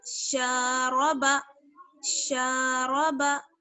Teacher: شین کو ہم نے کیوں کھینچا؟ کیونکہ شین میں الف مدہ جڑا ہوا ہے